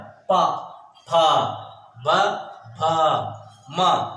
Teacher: पा वर्ग देखिए पूरे ओठों से, ओठों का उच्चारण है ये।